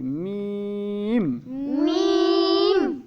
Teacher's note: دونوں ہونٹوں کو ملا کے ان کے درمیان سے اس کو ادا کیا جاتا ہے